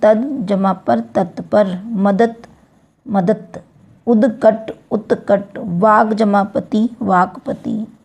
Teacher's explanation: घोष ध्वनि अघोष होती हैं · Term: अघोषीकरण